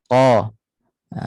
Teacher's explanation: Kerana qaf bersifat dengan isti'la, pangkal lidah terangkat.